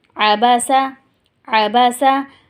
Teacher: عین آپ کو نکالنا ہوگا ورنہ الف کی آواز آ جائے گی اور معنی بدل جائیں گے، الفاظ بدل جائیں گے، تو ٹھیک ہے۔ · زبر بغیر کھینچے پڑھا جاتا ہے، اور اگر آپ نے اس کو کھینچ دیا تو اس میں اضافہ ہو جائے گا ایک الف کا اور وہ کھنچ جائے گا، لمبا ہو جائے گا، جو کہ حرام غلطی ہو جائے گی۔